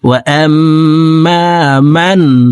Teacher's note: পরে ইজহারের 6টি হরফ থেকে একটি হরফ খ আসছে, এই কারণে নুন সেকেন্ডকে গুন্না ছাড়া স্পষ্ট করিয়া পড়ব